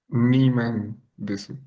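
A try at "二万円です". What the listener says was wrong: Sí, Niman endes. Ajá, muy bien.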